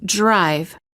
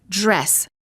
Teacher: when the d is followed by an r the d changes and becomes an almost j